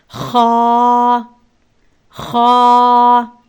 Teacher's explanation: سا سا، جیم جیم، ہا ہا حلق کے درمیانی حصے سے ادا ہوتا ہے۔ ہا، خا خا بھی حلق کے اوپر والے حصے سے ادا کیا جاتا ہے۔ جیسے کبھی کبھی ہم کوئی چیز کھاتے ہیں تو وہاں ہمارے محسوس ہوتا ہے جیسے کچھ پھنس گیا ہے، کچھ ہم کر کے آواز نکالتے ہیں، تو یہ جو جس حصے سے یہ خا نکلتا ہے وہیں سے آپ نے اس خا کو ادا کرنا ہے۔